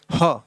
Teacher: तो देखो भाई, काकल्य वर्ण अभी मैंने बताया कि हिंदी में एक ही काकल्य वर्ण है जो कि ह है, और इसका उच्चारण कैसे होता है, इसकी जो परिभाषा है, इस वर्ण के उच्चारण में मुख द्वार आधा खुला होता है और हवा झटके से बाहर निकलती है। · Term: काकल वर्ण